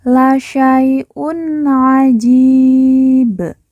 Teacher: tanwin bertemu dengan huruf Ain kita baca jelas karena bacaan izhar